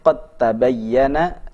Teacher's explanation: Dan bukti ada idgham pada ayat ini, qad tabayyana, dal yang seharusnya diqalqalahkan saat idgham maka qalqalahnya tidak terbaca